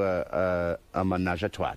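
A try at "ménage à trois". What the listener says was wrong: I didn't put a T. You put the T.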